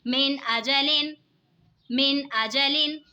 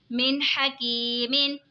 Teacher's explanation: نون ساکن کے بعد حروف حلقی کا حا رہے تو اظہار ہوگا، یعنی غنہ نہیں کریں گے، نون ساکن کی آواز کو بالکل ظاہر کر کے پڑھیں گے